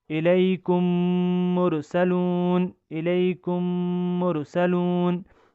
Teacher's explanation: ایک میم کو دوسرے میم کے ساتھ ملا کر غنہ کر کے ہم اس کو پڑھیں گے، یعنی ان کی آواز کو کچھ دیر کے لیے ناک میں لے جا کر پڑھیں گے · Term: ادغام شفوی